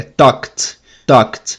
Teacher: O E não é pronunciado. Quando o verbo termina não vozeado, a gente pronuncia o ED como T.